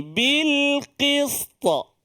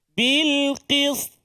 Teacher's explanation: kita wakaf ataupun berhenti yang mendatang Maksudnya kita matikan sukun yang mendatang asalnya berbaris tapi oleh kerana kita nak wakaf kita matikan baris dia maka jadilah kat situ Qalqalah